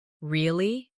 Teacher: With a rising tone to show surprise.